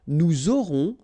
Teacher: final S not pronounced, and then you make the liaison